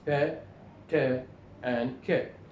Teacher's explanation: The breath rushes out with a slight explosion or popping noise, and sometimes we have what we call aspiration in voiceless stops